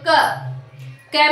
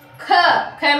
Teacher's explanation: क में कम हवा निकल रही है, ख में ज्यादा निकल रही है